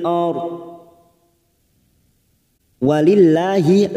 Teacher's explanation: Walillahi lam jalalah yang didahului kasro, maka kita baca tarkik.